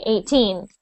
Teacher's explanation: similar but when you say 18 the the smaller number 18 you say teen very much louder than the eight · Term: stress